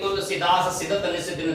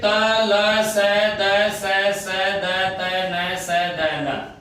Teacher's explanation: ये सारे के सारे वर्ण दंत्य वर्ण हैं, यानी इनका उच्चारण स्थान एक ही है, सबका दंत